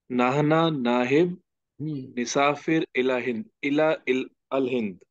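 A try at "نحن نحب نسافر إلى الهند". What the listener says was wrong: Yeah, ilal, try to join them. Ilal hind.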